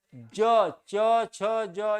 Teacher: ज च छ ज यह तालु से उच्चरित होते हैं।